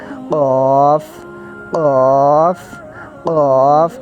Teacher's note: یہ جو دو نقطوں والا کاف ہے نا، اس کو ہم نے موٹا کر کے پڑھنا ہے قاف. حلق کے اینڈ سے اس کو آواز نکال کے لانی ہے اس کی قاف. موٹا کر کے اس کو پڑھنا ہے.